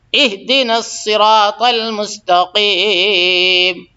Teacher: اہدے نہیں ہے بلکہ اہدی ہے